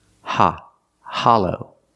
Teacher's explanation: The short ah sound like stop and hot, ha, hollow. The second syllable is the long O, like go and no.